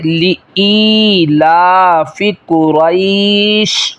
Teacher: شین کے اوپر جزم آ جائے گی، ساکن ہو جائے گی، یہ قریشن نہیں رہے گا وقف میں، بلکہ وقف میں قریش بن جائے گا۔